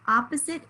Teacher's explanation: the second syllable right has the schwa spelled with an o